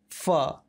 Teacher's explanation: जबकि नुक्ता वाले फ का उच्चारण करने के लिए ऊपर वाली दांत को नीचे वाले होठ पर रखकर कुछ हवा बाहर निकालते हुए उच्चारण करते हैं